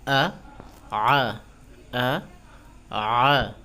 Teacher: যেমন আ আ, আলিফের উচ্চারণ আলিফ জবর আ, আইন জবর আ, একটা চিকন একটা মোটা